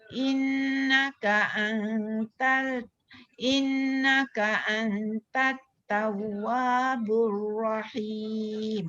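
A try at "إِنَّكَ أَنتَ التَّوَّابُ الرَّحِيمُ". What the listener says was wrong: Innaka antat. In. In tu jangan, in tu lidah kena lekat kat dalam langit. Dia jangan renggang pula. Innaka an tu baru dia renggang. Sebab dia dua hukum yang berbeza ni.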